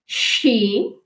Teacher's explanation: شین، پورے 5 کاؤنٹ کر کے پڑھا جاتا ہے